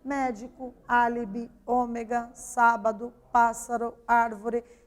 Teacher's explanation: aquelas palavras que têm a antepenúltima sílaba mais forte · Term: proparoxítonos